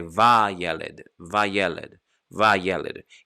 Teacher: To really separate the va from yeled, which is boy, I need to lengthen the vowel so that they don't just slide together.